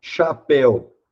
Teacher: coisa ó tenho aqui um ditongo aberto mas aqui também eu tenho uma palavra oxítona a sílaba forte é a última sílaba